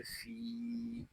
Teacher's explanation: फ़ा या ज़ेर फ़ी, यहाँ फ़ा को हम एक अलिफ तक खींच कर पढ़ेंगे क्योंकि यहाँ या मद्दा हो रहा है